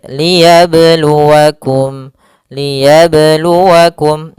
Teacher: pada huruf ba sukun ada namanya bacaan qalqalah, yaitu bacaan yang memantul. Qalqala artinya dari kata qalqala yuqalqilu qolqolatan bimakna alittirab pantulan.